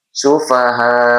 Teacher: Kemudian humussu alif lam syamsiyah atau idgam syamsiah sufaha kembali lagi bertemu dengan mad wajib muttasil fokus di baris haris ini bertemu dengan huruf hamzah dalam satu kalimat ini adalah mad wajib muttasil bacanya dipanjangkan 4 sampai 5 harakat